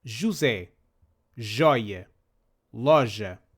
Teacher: This isn't exactly like the English J, with its short D sound before. It is closer to the French J in Jean.